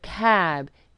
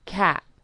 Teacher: devoicing the final sound, which is what it is called when a final voice sound is turned into a final voiceless sound